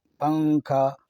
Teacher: تنوین یا نون ساکن کے بعد حروف اخفاء آویں تو نون کی آواز کو ناک میں چھپا کر پڑھنا چاہیے، نوک زبان تالو سے ہٹا کر، جیسے اردو میں پنکھا کے نون کو پڑھتے ہیں، پنکھا۔